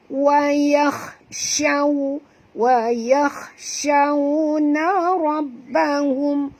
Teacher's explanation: bunyi dia bukan saw tapi syaw, ya, bunyikan tafashi pada huruf shim, ya. Dan waw di sini adalah sifatnya lin, maka bacaannya lunak.